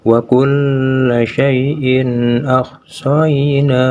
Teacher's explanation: Maka tanwin kasrohnya itu harus dibaca jelas seperti membaca huruf N. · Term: idhar